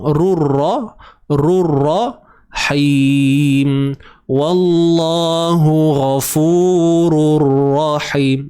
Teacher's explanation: Ingat tuan-tuan, idgham ni maksudnya masuk. Jadi kita nak masukkan tanwin tu ke dalam ra.